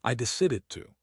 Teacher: The final d in decided often sharpens into a t- stop. I decided to or even merged.